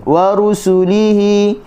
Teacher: Okey, cumanya di huruf sin kena hati-hati, jangan baca wa rusulihi bunyi dengan sad, tak, kita nak bunyi dengan sin.